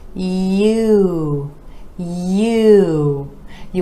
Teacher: for this vowel sound we're gliding from the yeah - ooh